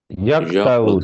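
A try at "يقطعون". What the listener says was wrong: تو وہ ایک تو یہ ہے کہ یک کہیں گے تو وہ کاف بن جائے گا، قاف کو موٹا کرنا ہے یا کو یا کو. آگے تو کو موٹا کرنا ہے یا کو توعون.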